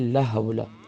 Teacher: ہم پڑھتے ہیں لا حول، تو لام کے بعد الف مدہ ہے، ایک الف کی مقدار کھینچیں گے، حول میں ہا گلے کے مڈل سے ادا کریں گے